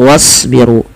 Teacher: Dan tebalkan pada lafal huruf shad karena shad termasuk huruf istila'la yang pangkal lidah kita kita naikkan. Dan shad juga memiliki salah satu sifat yaitu sifat idbaq yaitu lidah itu lebih melekat-lekat dengan langit-langit atas. Kemudian pada lafal ru di sini ada wau sukun yang didahului dengan dhamah maka dinamakan dengan mad thai.